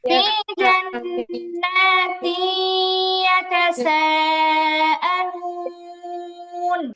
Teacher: ফি জান্নাতিন তানবিনের পরে ইয়া আসছে, ইদগামে বা গুন্না হরফ, তাসদীদ দিয়ে গুন্না সহ মিলায় পড়তে হয়।